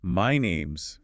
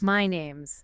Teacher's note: The stress is on name.